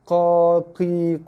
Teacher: Pangkal lidah kita jongkitkan dia. Naik, tekan pada halkum kita tu untuk keluarkan bunyi ko.